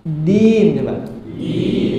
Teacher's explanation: ujung lidah bertemu dengan pangkal gigi seri atas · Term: Dal